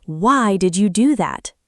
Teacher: If you say it softly and with a smile, it sounds curious. If you say it sharply, why did you do that? It sounds like you're upset. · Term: tone or intonation